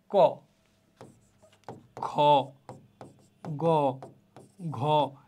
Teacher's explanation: জিভের পেছনের অংশ উঁচু হয়ে আল জিভের মূলের কাছাকাছি নরম তালু স্পর্শ করে জিহ্বা মূলীয় ব্যঞ্জন ধ্বনি উচ্চারিত হয়। কয়টা অঙ্গ প্রত্যঙ্গ দেখো, জিভের পেছনের অংশ উঁচু হবে।